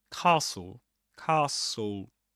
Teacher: You don't pronounce the T. Right? You don't pronounce the E at the end. You just say castle.